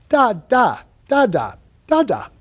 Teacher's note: day the baby decides to try the voiced Dental consonant so you put the tongue behind the teeth but instead of holding back the actuation of the vocal cords you actually let them Buzz as the air goes by so instead of a t you get a a d sound